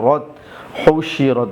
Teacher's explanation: র তা জবর রত, হুশিরত, রর উপরে জবর আসার কারণে রকে মোটা করে পড়ছি